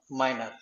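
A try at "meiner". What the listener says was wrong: ওকে, perfect.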